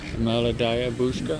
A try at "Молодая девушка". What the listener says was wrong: Девушка. Not бабушка, honey. Девушка. Он все время, он когда его учу называть меня девушка, он все время путает с бабушкой или с песней. I say you always change when I ask you call me девушка, you call me бабушка.